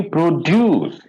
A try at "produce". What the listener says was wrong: slightly longer, slightly, not much.